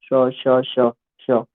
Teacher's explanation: श तालव्य है, श श श श तो उष्ण व्यंजन